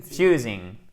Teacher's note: Faites bien l'accentuation sur la deuxième syllabe.